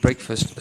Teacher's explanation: the plosive K followed by the fricative F.